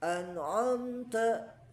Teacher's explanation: Hati-hati huruf ain ini dia tipis ya, terkadang suka menebal an'amta harusnya di sini a tipis ya.